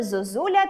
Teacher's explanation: після складу з [о] наступним є склад з [у], і він наголошений тому звук [о] ми вимовляємо наближено до [у]